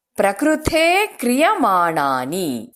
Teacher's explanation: ವಿಸರ್ಗ ಆದ ನಂತರ ಕ ಅಕ್ಷರ ಬರೋದ್ರಿಂದ ಹಕಾರವನ್ನ ಹೇಳಬೇಕು, ಹೆಚ್ಚು ಹೇಳ್ತೇವೆ.